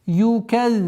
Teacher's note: Удваиваем заль и межзубная она. И при остановке фатха уходит в сукун.